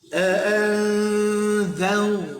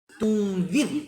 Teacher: Lepas tu lam tunzir, tadi zau ni zir, zau tebal muncung, zir nipih renyih sehabis-habisnya